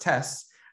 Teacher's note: the word test ends in a voiceless consonant cluster, ST, which in the context of African-American language patterns can be communicated without that final consonant T, so that it's just tests.